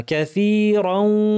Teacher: এটা গুন্না সহ ইদগাম, নাক থেকে গুন্না করব কিন্তু অর্ধেকে গুন্না